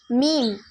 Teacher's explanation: மீம் இரு உதடுகள் ஈரப்பகுதியில் சேர்வதால் உருவாகிறது. பா வந்து இரு உதடுகள் காய்ந்த பகுதியில் சேர்வதால் உருவாகிறது.